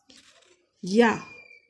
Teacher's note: ज़बान का दरमियानी हिस्सा तालू की तरफ उठता है और हरफे या अदा होता है